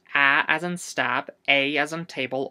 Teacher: the letter a could also be pronounce æ as in stab, ei as in table